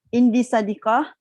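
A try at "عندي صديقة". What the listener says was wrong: Panjang sikit. Indi sadiqah.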